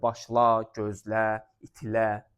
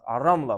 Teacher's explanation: Bir də adlardan zərf düzəldən şəkilçi kimi istifadə olunur. Zərf düzəldən şəkilçi olanda artıq vurğu qəbul etmir.